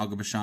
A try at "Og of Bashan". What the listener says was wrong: Og of Bashan. You always say Og of Bashan, like Aga. It's Og of Bashan. But the way you say it sounds like Aga.